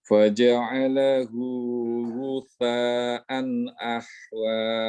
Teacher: Lahan jali terdapat pada makhraj yang tertukar. Itu adalah tha, bukan shin.